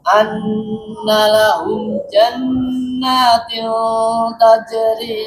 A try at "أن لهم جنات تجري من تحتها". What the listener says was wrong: Tah. Masih tebal itu, masih tio. Coba. Jannati tajri. Pangkal lidahnya turun. Di sini ada dua ikfa yang dimana dia sama-sama bertemu huruf ta. Jangan jannatil tajri mil, itu tebal.